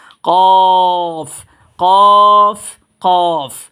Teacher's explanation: হবে এটার নাম হবে কফ আর কফ উচ্চারণ হবে কোত্থেকে উচ্চারণের স্থান হচ্ছে আপনার জিহ্বার ঘোড়া তার বড় বড় উপরে তালুর সাথে লাগিয়ে মোটা আওয়াজে পড়বো